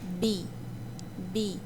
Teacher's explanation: Perceba que o lábio superior e o lábio inferior se tocam, mas no curto espaço de tempo.